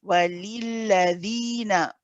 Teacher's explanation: the dhal here has got the ya mad. It is mad tabi'i harakatain, or 2 counts